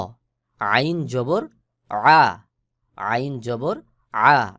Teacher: আইনের উচ্চারণ ওই উপরের হার মতো, অর্থাৎ হলকের মধ্যখান হইতে আইন আর হা উচ্চারণ হয়। হলকের মধ্যখান থেকে একটু চাপ দিয়ে আইন উচ্চারণ করবেন